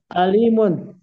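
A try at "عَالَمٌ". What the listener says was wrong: Alamun panjang. Alamnya fathah. Alamun.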